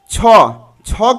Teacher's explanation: छ का उच्चारण स्थान हो जाएगा तालू